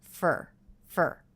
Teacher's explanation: that was reduced to fur fur fur very quick with the schwa R sound